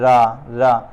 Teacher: जिस के उच्चारण में जीभ तालू से लुढ़क कर स्पर्श करे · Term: लुंठित